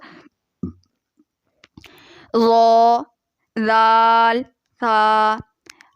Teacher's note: لثویہ میں زبان کا سرا اوپر کے دانتوں کے اندرونی کنارے سے لگے گا، یعنی کہ دانتوں کے اندر والے حصے سے لگے گا، تو لثویہ حروف ادا ہو جائیں گے۔ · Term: حروف لثویہ